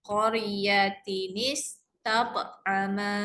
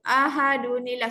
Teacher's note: disebabkan tanwin jumpa dengan hamzah wasal kena ubah. Tambah nun. Nun berbaris bawah sahaja.